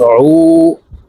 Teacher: আইন হরফকে হলকের মধ্যখান থেকে চাপ দিয়ে উচ্চারণ করব , কারণ আইনের মাখরাজ হলকের মধ্যখান থেকে হবে। নুন ইয়া জের